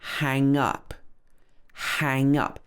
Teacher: here we stress the up